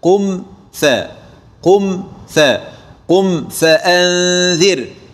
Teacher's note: عندما أقول مثلا قم فأنذر، هنا ملاحظة وتنبيه من جميع العلماء على عدم إخفاء الميم الساكنة عند حرف الفاء، وذلك للتقارب الشديد في المخرج بينهما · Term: الإظهار الشفوي